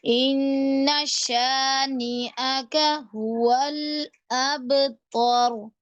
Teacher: बा के ऊपर आप कलकला करेंगे